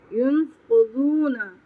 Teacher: قاف پہ تفخیم ہوگی، ضاد پہ تفخیم ہوگی، اور ضاد کو لمبا کریں گے کیونکہ یہاں پہ واو مدہ آ رہا ہے